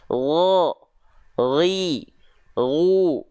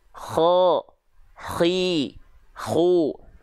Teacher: kalau huruf Gin ini dilafalkan ada ngorok ada keluar nafasnya nanti pasti ada ngoroknya